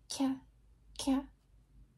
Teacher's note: It sounds like a ka and a ga, but your tongue is touching the roof of the mouth and it's flat. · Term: palatal plosive